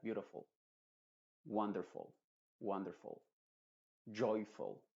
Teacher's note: en palabras que terminan en full la u se pronuncia como una shua